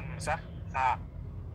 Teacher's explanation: হামজা এবং হা এটা কোথা থেকে উচ্চারণ হয় গলার একদম নিচ থেকে।